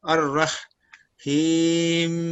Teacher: اس میں حرکت کا تیسرا حصہ ظاہر کیا جاتا ہے اور اس کا موقوف علیہ ساکن شمار نہیں کیا جاتا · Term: وقف بالروم